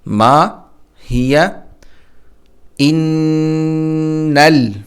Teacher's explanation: حمزہ کو نون سے ملانا ہے اور نون پر غنہ کرنا ہے، ناک میں آواز پیدا کرنی ہے